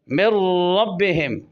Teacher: من ربہم، میم ڈائریکٹ اور را سے مل رہا ہے، نون را میں داخل ہو رہا ہے، نون اور را قریب المخرج ہیں اور نون کی کوئی صفت باقی نہیں ہے، لہذا ادغام متقاربین تام ہوا۔